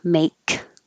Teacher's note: it ends with a voiceless sound k